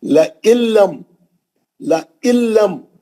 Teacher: لَإِلَّمْ، لَإِلَّمْ، نون ساکن کا ادغام بلا غنہ حرف لام. نون پڑھیں گے نہیں، سیدھا لام میں چلے جائیں گے.